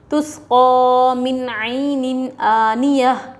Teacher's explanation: سین کے اوپر جزم پچھلے والے حرف سے ملا کر پڑھیں، قاف کے اوپر کھڑا زبر حروف مدہ تھوڑا کھینچ کر پڑھیں۔ نون ساکن کے بعد حروف حلقی میں سے عین آ رہا ہے، نون کی آواز کو ظاہر کر کے بلا غنّے کے جلد پڑھیں گے